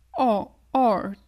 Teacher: On n'entend pas trop le R, tu sais, le R américain, anglais, on l'entend pas autant que nous, notre R français.